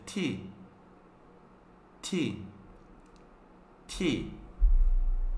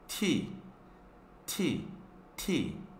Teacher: Es como si mordieras la punta de la lengua con los dientes, no fuerte, así como si estuvieras mordiendo la lengua, punta de la lengua con los dientes, impidiendo que saliera aire de la boca.